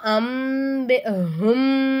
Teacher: சக்கீன் வந்திருக்கு அடுத்ததா பா வந்திருக்கு இங்க நமக்கு யக்குள்ள சட்டம் வருது அப்போ நூனே சக்கின் நம்ம என்ன செய்யணும் மீமா மாத்தி நம்ம உச்சரிக்கணும்